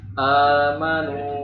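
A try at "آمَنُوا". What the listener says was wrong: Nah, ini infitahnya nggak kebuka nih, nggak sifatnya nggak ini. A. Tapi amanu.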